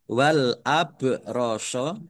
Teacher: ba sukun bacaan qalqalah dibaca memantul